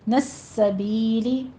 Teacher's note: وب، جلدی سے ہونٹوں کو کھولیے تاکہ قلقلہ ہو، تھوڑی سی جنبش ہو. نسبیلی، اس کو سین کی آواز پہ سیٹی بھی لے کر آئیں گے